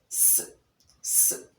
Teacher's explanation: when you pronounce the sound you realize that the tip of the tongue is in contact with the alveolar ridge